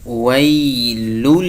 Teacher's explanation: واو د یا سره جنګوو، پر یا باندې لین کوو. څه معنا؟ یعنی نرمی کوو